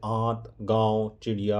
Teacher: अनुनासिक के उच्चारण में नाक से बहुत कम सांस निकलती है और मुख से अधिक